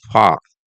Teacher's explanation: if R is at the end, it's not soft, it's totally gone. You see, mostly silent unless followed by vowel.